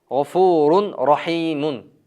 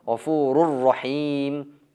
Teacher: G'ofurun degan tanvini ro tamg'asiga, keyingi ro tamg'asiga idg'om qilindi